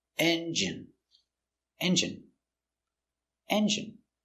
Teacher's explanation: stress on first syllable